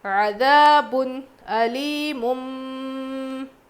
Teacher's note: تنوین کے بعد حروف حلقی میں سے حمزہ آیا ہے، نون کی آواز کو ظاہر کر کے پڑھنا چاہیے